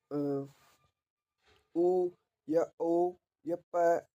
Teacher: ये होठों की सहायता से बोले जाते हैं। ठीक है, तो ये ओष्ठ कहलाएंगे।